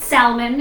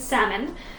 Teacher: you don't say the L sound